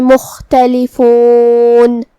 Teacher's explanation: کلمت مختلفون میں یہاں حرف الخاء کو ہم حلق کے اوپر والے حصے سے ادا کریں گے. خاء حروف تفخیم میں سے بھی ہے تو ہمیں اسے بھاری آواز میں پڑھنا ہے اور جو کہ اس پہ جزم ہے تو ہمیں خاء کو ظاہر کرنا ہے.